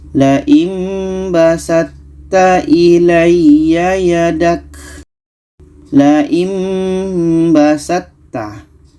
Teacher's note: Ta bertemu ta, maka ta ini yang sifat asalnya adalah qalqalah tidak jadi karena kita masukkan ke ta. Untuk makhrajnya sama-sama ujung lidah bertemu dengan pangkal gigi seri atas, maka ta ini kita masukkan ke ta.